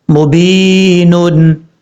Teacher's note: بی، نون دو پیش نون، مبینن، یہاں پر یا مدہ ہے، یا ساکن سے پہلے زیر ہے اس لیے اس کو ایک الف کی مقدار لمبا کر کے پڑھیں گے۔